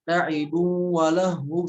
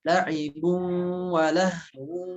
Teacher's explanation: Pada kata la'ibu wa lahu, ya di sana bil gunnah masing-masing ditahan 3 harokat. Jadi jangan ditinggalkan gunnahnya. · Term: idgham bi gunnahnya